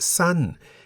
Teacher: Well, the single syllable in the word san begins with a high-class consonant saw, se and has the tone mark mai to. San is therefore in the falling tone.